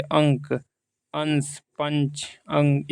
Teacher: अनुस्वार के उच्चारण में नाक से अधिक सांस निकलती है और मुख से कम